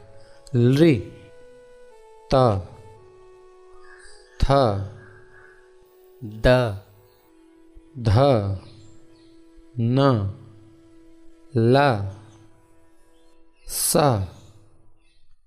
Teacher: अगला सूत्र है ऋतुलसानां दंताः, अर्थात जिन वर्णों का उच्चारण स्थान दांत होता है उन्हें दंत्य वर्ण कहते हैं। इन वर्णों का उच्चारण करते समय जीभ दांत का स्पर्श करती है